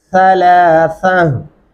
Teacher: सा पढ़ते हुए आपके ज़बान की नोक जो है वो दांतों के नीचे आनी चाहिए, सलासा। और ता को हा में बदलते हुए पता चलना चाहिए कि वक़फ़ हुआ है यहाँ पे, और हा की भारी आवाज़ महसूस होनी चाहिए।